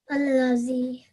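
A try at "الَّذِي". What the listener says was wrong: Excellent.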